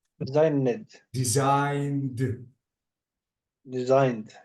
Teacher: design it design okay and notice that the is voiced so I have to delete the e sound and I have to keep the D